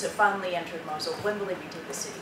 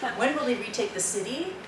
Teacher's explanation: It's always a downward tone. And it's still a question